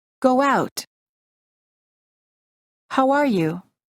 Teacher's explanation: when we say go out, we insert a little W sound and it sounds like go out. · a short W sound, after a back vowel such as U and O